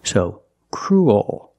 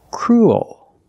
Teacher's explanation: your tongue is not straight. It goes a little high in the back. And the bottom of the tongue expands. It gets bigger to make the dark L.